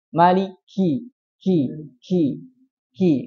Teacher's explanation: Ya, huruf hamas. Yaitu ada desisnya.